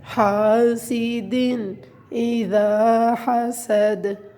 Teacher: حاسدن کے اپنے اندر غنہ نہیں کرنا اس لیے کہ آگے حروف ہلکی میں سے حمزہ آ رہا ہے